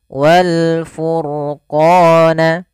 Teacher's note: Ini dibaca juga dengan bacaan alif lam qamariyah, walnya langsung dan dibaca dengan jelas.